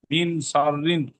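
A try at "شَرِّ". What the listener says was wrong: রিন। এখানে এখানে রিন হয়ে যাচ্ছে, রিন হবে না, র লাম জে রিল, রিন নই, রয় দীর্ঘই ল, রিল, লামে ল উচ্চারণ হয়, রিল। সিন লাম জের সিল, সিন লাম জের সিল, সিন লাম জের সিল, সিন নই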